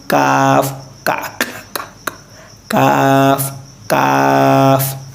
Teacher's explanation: ये जो काफ है वो भी ज़बान के जड़ और तालु के सख्त हिस्सा में महसूस होना चाहिए।